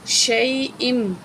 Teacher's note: یا حمزہ کو میم سے ملائیں گے